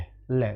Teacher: जीभ के पिछले हिस्से से बोला जाता है, ले ले, जीभ का उल्टा हिस्से से है। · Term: पार्श्विक